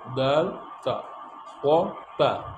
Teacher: দাল তা কিন্তু উচ্চারণ হচ্ছে একই মাখরাজ থেকে কিন্তু উচ্চারণটা কিন্তু একই করে ফেললে হবে না মোটা তা পাতলা